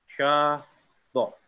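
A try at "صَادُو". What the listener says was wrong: Ulang. Agak panjang dikit. Shado.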